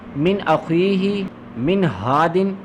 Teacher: अगर इनमें से कोई भी लफ्ज़ नून साकिन या तनवीन के बाद आ जाए तो उसको हम लोग इजहार करके पढ़ेंगे यानी ज़ाहिर करके पढ़ेंगे। इजहार का मतलब होता है यानी इसमें गुन्ना नहीं होगा